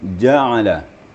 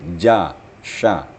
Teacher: Kemudian ja'ala. Jim makharijul hurufnya sama dengan shin, yaitu di tengah-tengah lidah dan di tengah langit-langit.